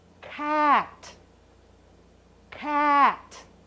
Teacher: when the hard C is sounded you have to make the air out of your mouth with a force